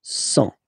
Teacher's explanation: Remember, final T not pronounced.